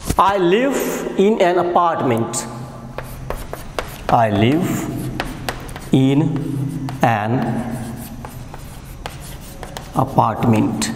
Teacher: The pitch changes at the second syllable, that is part. A part. It has a 3 syllable, a, part and meant. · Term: falling tone